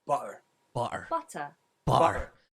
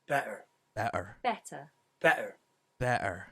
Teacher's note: when a T is in the middle of a word, mostly when it starts the final syllable, it becomes a glottalized T